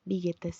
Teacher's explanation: se une el sujeto y suena como si fuera una sola palabra